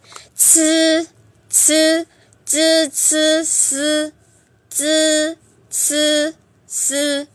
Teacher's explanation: Nó đọc bằng đầu lưỡi của chúng ta thôi. Tại vì chúng ta thẳng lưỡi ra và cái hơi nó sẽ đẩy ra từ đầu lưỡi. Coi chúng ta đẩy mạnh hay đẩy nhẹ thôi thì cái âm nó khác nhau. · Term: bật hơi